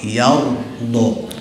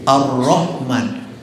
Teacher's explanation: cirinya tebal itu kalau roh mengarah kepada u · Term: ro tafkhim